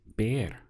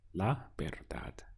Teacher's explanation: The sound is ver because we have the V, which always gets pronounced like a B. So the first syllable is ver, and then we have dad, la verdad.